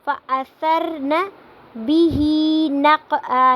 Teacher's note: نَقْعًا پہ قلقلہ ہو رہا ہے، قاف ساکن ہے اس لیے یہاں پہ قلقلہ ہو رہا ہے